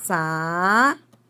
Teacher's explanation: no adjetivo, é o sa, que é a sílaba tônica